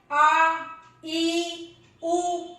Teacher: ह्रस्व स्वर से ज्यादा समय लगा, दुगना समय लगा। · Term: दीर्घ स्वर